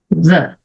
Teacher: Então, o que eu vou fazer? Vou colocar a minha língua atrás dos dentes de cima.